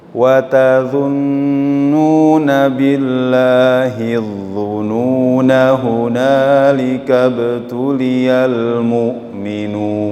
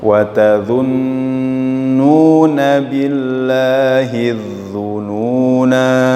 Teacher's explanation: Kalau disambung tidak dibaca panjang ya. Tapi ketika waqaf baca 2 harokat dzununa itu.